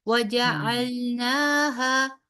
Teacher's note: دونوں کو 2 حرف برابر لمبا کریں گے، نا کو بھی اور ہا کو بھی، ٹھیک ہے۔ نا ہا یا نا ہا نہیں پڑھیں گے، ٹھیک ہے۔